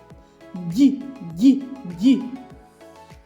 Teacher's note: ді приголосний чи голосний він приголосний а дзвінкий чи глухий так він дзвінкий тому що горло наше працює коли ми його промовляємо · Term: звук ді